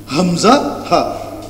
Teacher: এই হামজা এবং এ হা এই দুইটা হচ্ছে গলার শুরু অর্থাৎ হলাকের শুরু